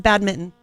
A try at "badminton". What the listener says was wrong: You're pronouncing the T. Then what are you saying when you say badminton? It's an undefinable letter.